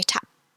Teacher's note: your mouth still closes to represent the P sound, but you don't pronounce the sound. You don't articulate the sound.